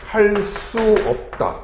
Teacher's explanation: 뒤에 오는 의존명사가 된소리로 발음이 된다